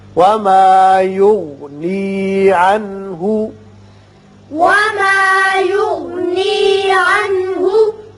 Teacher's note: عنہ میں نون ساکن کے بعد ہا ہے جو کہ حروف حلقی میں سے ہے، لہذا یہاں اظہار حلقی ہوگا